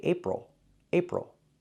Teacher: We have to use the ol sound for the last syllable. Ol, like in little, table, ol. It's a closed, relaxed sound. Plus the dark L, ol.